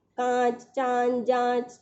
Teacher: अनुनासिक का उच्चारण वायु को नाक और मुख दोनों से बाहर निकलता है। इसका चिन्ह शिरोरेखा के ऊपर चंद्रबिंदु इस तरह से होता है।